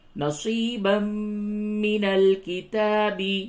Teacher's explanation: تنوین کے بعد میم ہے، ادغام مع الغنہ ہوگا